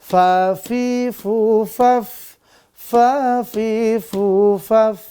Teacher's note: Ujung gigi dari atas dengan bibir bawah bagian dalam. Kena fathah dia jadi fa, kasroh dia fi, domah dia fu, lalu faf. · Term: huruf fa